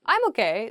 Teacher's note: it's like sort of upward intonation